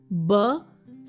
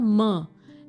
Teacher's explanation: the sounds which are produced by bringing both the lips together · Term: बाय लेबियल साउंड्स